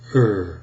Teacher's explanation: I come a little closer on my mouth you'll see that in American English the nurse words are slightly lip rounded the lips are pressed forward a little